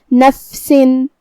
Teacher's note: فا بھی حروف الہمس میں سے ہے